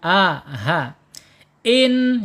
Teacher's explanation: hamzah atau alif ini secara makhraj ada di tenggorokan paling bawah